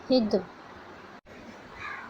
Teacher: دال زبان کی نوک سامنے کے 2 دانتوں کے جڑ میں لگانے سے ادا ہوتی ہے، دال حروف قلقلہ میں سے ہے، مطلب جب دال پر جزم ہو تو اس کا مخرج ٹکر کھا کر الگ ہو جاتا ہے، جیسے ہا دال زیر ہد۔